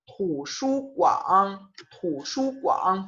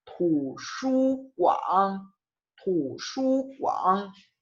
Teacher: Fíjate cómo estoy haciendo el tercer tono completo, con toda su duración.